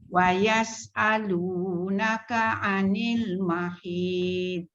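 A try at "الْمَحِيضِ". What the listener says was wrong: Tebalkan mahid. Tebalkan. Dot tu kena bunyi tapi tak melantun. Mahid. Tu bunyilah tu. Bunyi dot tapi tidak ada lantunan. Kalau lantunan mahid.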